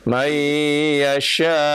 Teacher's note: shinnya keluarkan, shinnya. Shin ada tafashi ya, berhembus.